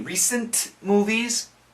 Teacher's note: the N and the M kind of cancel out the T.